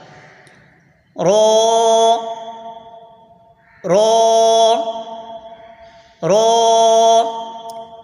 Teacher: زبان کا کنارہ پشت سمیت دانتوں کی جڑ سے ادا ہوتا ہے